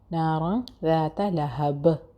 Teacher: نارا جو blue colour سے مارک ہوا ہے وہ ہے اخفا. نون کی آواز چھپانی ہے جس طرح سے پنکھا